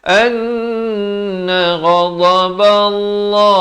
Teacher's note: Dibacakan tebal dua harakat. Dha di tepi lidah.